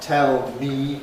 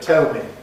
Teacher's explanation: a weak form, which involves switching to the happy vowel